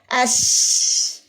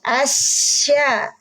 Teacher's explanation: keluarnya suara udara yang kuat, ya, melalui celah gigi kiri dan kanan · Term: desis tafasyi